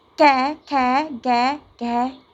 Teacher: जब इनको हम बोलते हैं तो हमारी जीभ जो है हमारे कंठ से स्पर्श होती है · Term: कवर्ग